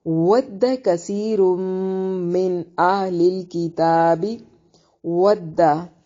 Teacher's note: वाव की अदायगी के वक्त होंठों को गोल करेंगे और दाल को झटके से अदा करना है।